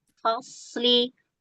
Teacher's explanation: Huruf fa-nya tertib, sodnya baru tafkhim ya. Fasli, lah fos ya, jangan ngikut ke sod dulu.